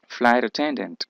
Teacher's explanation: Irían dos estrés, uno o dos acentuaciones fuertes, dos entonaciones fuertes. Uno en flight y el otro en ten.